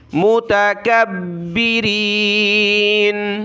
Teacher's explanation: با کو سخت کیا تشدید کی وجہ سے